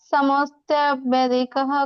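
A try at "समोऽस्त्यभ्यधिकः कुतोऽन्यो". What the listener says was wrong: ಬೆದಿಕಃ ಅನ್ಬಾರ್ದು, ಅಲ್ಲಿ ನೀವು ಕಟ್ ಮಾಡ್ಬೇಕು. ಸಮೋಸ್ತ್ಯಭ್ಯಧಿಕ ಕುತೋನ್ಯೋ ಅಂತ ಹೇಳ್ಬೇಕು. ಅದು ಮಧ್ಯ ಅಹಕಾರ ಬರುತ್ತಲ್ಲ, ಅದನ್ನ ಹೇಳ್ಬಾರ್ದು ಪೂರ್ತಿಯಾಗಿ. ಅದು ಫುಲ್ ಹೇಳ್ಬಾರ್ದು. ಸಮೋಸ್ತ್ಯಭ್ಯಧಿಕ ಕುತೋನ್ಯೋ ಅಂತ ಹೇಳಿ.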